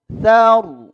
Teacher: Karena roknya disukunkan sebelumnya berbaris fathah. Maka harus tebal, tafkhim, rok tafkhim.